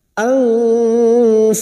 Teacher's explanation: Khasiru ang nun sukun bertemu fa ikfa hakiki. Kita samarkan bunyi nun sukun dan mendengung selama 3 harakat